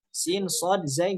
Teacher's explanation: Baik. Ujung lidah bertemu dengan gigi seri bawah itu ditempelkan, tidak ada celah. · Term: huruf sofir